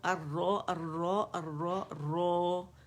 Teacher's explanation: را 2 کاؤنٹس کھینچنا ہے، ٹھیک ہے